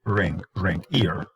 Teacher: the tongue is not really making contact with the alveolar ridge so the sides of the tongue are lifting and curving